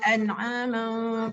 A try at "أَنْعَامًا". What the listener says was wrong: أنعاما فهم لها مالكون. Sebut an'aman. Ma tu masih rendah. أنعاما فهم لها مالكون. mau naik atas. Mau ma.